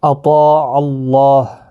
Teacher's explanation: فقد قاف مستعلیہ ہے، پر پڑھا جائے گا، دال ساکن پر قلقلہ ہوگا، حروف قلقلہ 5 ہیں، قاف طا با جیم دال، جب یہ ساکن ہوتے ہیں تو ان پر قلقلہ بھی ہوتا ہے۔ اطاع اللہ، حروف مستعلیہ کا طا اور الف دونوں پر پڑھے جائیں گے